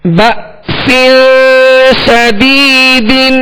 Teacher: با کے ساتھ حمزہ ساکنہ ہے، یہاں جھٹکا واضح کریں گے